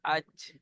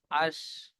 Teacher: জিভের মাঝখান এবং তার বারাবার উপরে তালুর সাথে লাগিয়ে উচ্চারিত হয় জিম শিন ইয়া